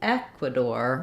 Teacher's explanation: when we're saying Ecuador, we stress on the eh in English